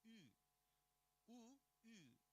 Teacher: It's a unrounded high back vowel.